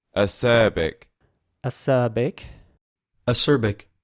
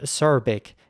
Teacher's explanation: again acerbic and his British English acerbic acerbic acerbic and acerbic in American English the r always gets pronounced a little bit harder